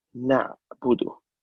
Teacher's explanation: Ain here, we cannot bounce this letter. We can't say na'budu, na'budu.